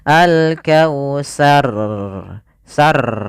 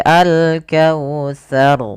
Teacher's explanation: Ro memiliki sifat yaitu sifat takrirnya. Takrir yaitu pengulangan di dalam huruf ra. Tapi di sini hanya sekali saja pengulangannya tidak boleh banyak.